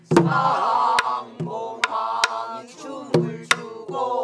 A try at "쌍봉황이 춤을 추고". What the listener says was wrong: 춤을 추고가 약간 늦는다. 쌍봉황이 춤을 추고